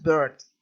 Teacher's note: Entonces, aquí lo que tenemos que notar que el núcleo de la sílaba está compuesta, es una sola sílaba, pero el núcleo está compuesto por una R